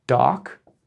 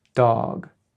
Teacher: so you've probably not noticed before that doc is half the size of dog